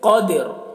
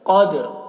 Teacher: یہاں پر جب وقف کریں گے تو را کی آواز ظاہر ہوگی، جیسے قادر، دیکھ رہے ہیں، قاف کو موٹا کر کے پڑھ رہے ہیں، دال میں قلقلہ کر رہے ہیں اور را کی آواز کو ظاہر کر رہے ہیں